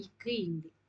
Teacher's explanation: இரு மெய்களும் நாவின் முதற் பகுதி அன்னத்தின் அடிப்பகுதியை பொருந்துவதால் பிறப்பது